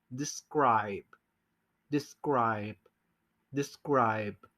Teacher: I know, yo sé que para los hispanos nos cuesta mucho trabajo, primero que nada porque tenemos una B larga al final, no se dice la última letra, por eso se hace larga la I, y la B es labial, entonces tenemos que terminar la palabra cerrando los labios